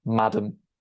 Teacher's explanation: you stress the first syllable not the second